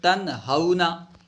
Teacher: نون کو ظاہر کر کے پڑھیں گے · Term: اظہار